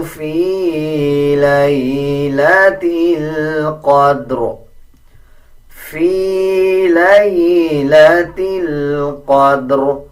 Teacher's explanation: اب اکثر لوگ اس کو فی لیلۃ القدر پڑھ دیتے ہیں، وہ غلط ہے. جب وقف کریں گے تو را کو پر یعنی موٹا پڑھیں گے